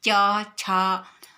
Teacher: च बोलने में हम लोग का जो जिब्बा होता है वो जिब्बा तालू तरफ लग जाते हैं, च छ, तो वो इसीलिए इसका नाम है तालव्य वर्ण।